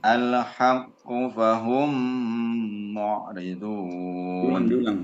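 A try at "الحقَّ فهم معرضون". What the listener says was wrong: Diulang harokatnya fathah. Al-haqqa. Nah, kenapa dikasih harokat fathah? Nah, kenapa dikasih harokat fathah ya?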